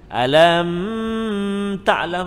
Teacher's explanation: Mim mati bertemu dengan ta. Izhar syafawi. Jangan dengung, jangan pegang, jangan lambat, jangan delay.